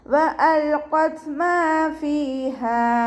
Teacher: മീമിൻ്റെ കൂടെ അലിഫ് മദ് വന്നു, 2 കൗണ്ട് നീട്ടിക്കൊടുക്കുക